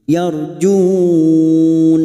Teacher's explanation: bertemunya Mad dengan huruf hidub yang dibaca wakaf empat harakat